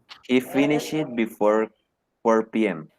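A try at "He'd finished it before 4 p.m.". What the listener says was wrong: So, he'd finished, be careful with the pronunciation, he'd. Si ustedes tienen la forma contraída, mis amores, tiene que sonarles esa de al final. Si ustedes me dicen, he finished before 4 p.m. están diciendo, él terminó. Pero si ustedes le suena la de he'd finished, están diciendo, él había terminado.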